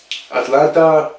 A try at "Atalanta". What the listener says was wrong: Atalanta. No, Atalanta. No, because you're saying Atlanta. That's like Atlanta United.